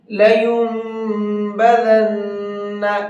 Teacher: لینبذن، یہ جو چھوٹا سا میم بنا ہوا ہے یہ میم پڑھا جائے گا، اب یہ نون نہیں پڑھا جائے گا۔ اس طرح سے میم کی آواز نکلنی ہے، نون کی آواز نہیں نکلنی، اور ساتھ میں غنہ بھی کرنا ہے۔ بدن کے نون کے اندر بھی غنہ کرنا ہے۔